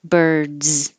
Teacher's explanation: can say it often birds with a z if it's plural it looks like an s but it sounds like a z birds so your voice is already on for the vowel er and then a d so keep it on for the z